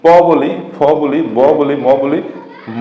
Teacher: যাই বলি আমরা কিন্তু এই ঠোটের সাথে দুই ঠোট মিলে যায় তাহলে এই যে এখানে ঠোটটা মিলে যায় এজন্য এটা বলা হয় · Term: উষঠ বর্ণ